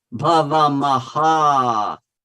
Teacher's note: bhavama were the light syllables. They're fast. We go through them really fast. And then again on ha, it's twice as long as each lagu.